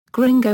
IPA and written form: ˈɡrɪŋɡoʊ (Gringo)